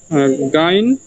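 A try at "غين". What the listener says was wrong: গইন হবে, ঠিক আছে, গাইন হবে না, গইন হবে। ঠিক আছে, গাইন, গইন, গইন।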